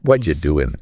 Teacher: what do you just blends into what you >> and even the g in doing often drops off doing >> it's called elision.